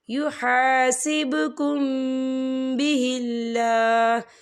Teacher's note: یہاں پر اقفا شفوی ہوگا اور ہم یہاں غنہ بھی کریں گے